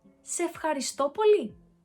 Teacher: In Greek, when a word ends with a vowel and the next one starts with one, then the first word loses its vowel and it's replaced by an apostrophe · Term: contraction